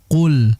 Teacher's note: Jadi hati-hati untuk pengucapan huruf qaf. Jangan sampai kita ubah menjadi kaf sehingga menjadi kul. Yang betul adalah qul.